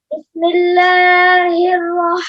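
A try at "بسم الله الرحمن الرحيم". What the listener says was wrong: ابھی اللہ بھی زیادہ لمبا ہو رہا ہے، ایسے پڑھیں گے آپ. بسم اللہ الرحمن الرحیم.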